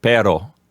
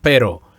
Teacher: Now, when you say pero, P-E-R-O, it sounds like your tongue is only flapping against the roof of your mouth one time, almost like a D sound, like pero. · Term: short rolled R sound